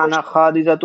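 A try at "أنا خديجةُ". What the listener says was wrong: আনা খাদিজাতু না, আনা খাদিজাতু। খয়ের পরে কিন্তু আলিফ নেই।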